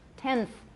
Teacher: The N becomes interdental. Tenth, my N is interdental.